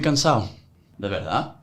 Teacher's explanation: they don't fully pronounce consonants toward the end of words, particularly B's and D's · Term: eat letters